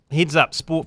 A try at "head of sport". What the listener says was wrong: It makes it sound like you said heads up sport. She's the head of sport. It just made it sound like heads up sport for TVNZ.